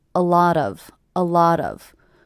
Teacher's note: three words is one unit a lot of a lot of with the stress happening on the middle word a lot of a lot of people ask me I also